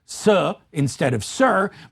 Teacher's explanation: What is characteristic is the dropping of the final R sound. And so sir is spelled S-U-H.